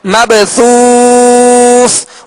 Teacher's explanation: کل فراش المبثوث، یا مب با ساکن ہے، حروف قلقلہ میں سے ہے، قلقلہ کریں گے یعنی آواز میں جنبش ہوگی، آواز لوٹتی ہوئی آئے گی. مبثوث، واو مدہ کے بعد سکون عارض ہے، یعنی وقف کی صورت میں دوسرے ثا کو ہم نے ساکن کیا اور سکون عارض آیا، لہذا یہاں مد عارض ہوگی